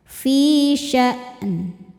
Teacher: Fi mad thabi'i dzahiri karena ada ya sukun sebelumnya kasrah. Cara bacanya panjang dua harakat.